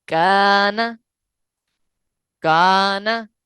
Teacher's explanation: الف باریک اس لیے پڑھا گیا ہے کیونکہ کاف باریک لفظ ہے، کاف جو ہے وہ باریک ہے، موٹا نہیں ہے، لہٰذا اس لیے الف باریک ہوا ہے، ٹھیک ہے۔